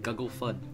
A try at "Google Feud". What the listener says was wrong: like you don't pronounce the E whatsoever.